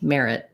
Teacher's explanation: So in the word merit, I wouldn't say the T. I would use a stop T, merit, where I go up to say the T, but I don't release it.